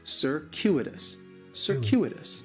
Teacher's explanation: In the first syllable, that C is going to have more of an S sound, circuitous. The stress is going to be on that second syllable, and that CU it's kind of like you're saying the letter Q, circuitous.